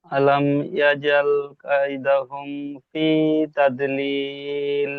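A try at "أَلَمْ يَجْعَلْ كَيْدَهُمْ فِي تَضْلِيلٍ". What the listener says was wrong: আলাম ইয়াজ আল, আল বলে আমি এখানে টানছি না। আলাম ইয়াজ আল, ইয়াজ আল, ইয়াজ আল কাইদাহুম, কাইদাহুম ফি তাদলিল।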